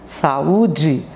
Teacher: Quando as vogais vizinhas são pronunciadas em sílabas diferentes, aí acontece o quê? O hiato